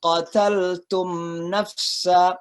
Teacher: maka itu dibaca dengan izhar dengan jelas jadi suara mim matinya itu diperjelas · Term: izhar syafawi